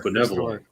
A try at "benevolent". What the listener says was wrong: you said banana-volent.